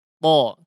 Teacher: Di situ juga di antara huruf yang paling kuat huruf to juga ya. Sehingga keluar dengan keras kemudian tidak ada desisnya ya.